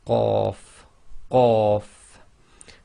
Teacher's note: So when you say Qaf, the back of your tongue effectively touch the very back of the soft palate and blocks the air before you release the sound